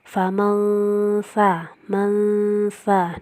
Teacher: nun sukun bertemu sa, ikhfa hakiki, dibaca samar dan dengung.